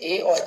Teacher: ए और ऐ जो है वो कंठ और तालु के माध्यम से बोला जाता है